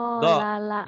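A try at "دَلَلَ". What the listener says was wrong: Jangan jo ya. Ini mah bulet. Do. Dodol Garut. Do. Dolala.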